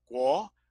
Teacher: Then you have Guo, where the U is short and the O is long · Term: diphthong